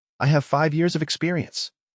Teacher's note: When I'm stating a fact, my voice goes down at the end.